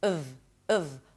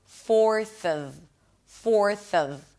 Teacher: the F is a V, just so you know, and the O is reduced to a schwa.